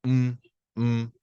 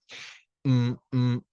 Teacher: o meu nariz mexe um pouco mais porque o som é nasal